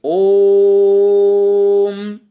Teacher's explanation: प्लुत, इसका उच्चारण त्रिमात्रिक होना चाहिए, अर्थात जितने समय में हाथ की कलाई की नाड़ी 3 बार धड़कती हो, इतने समय में उसका उच्चारण करना चाहिए।